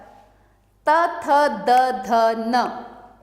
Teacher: त वर्ग त थ द ध न इसमें दांत का स्पर्श हो रहा है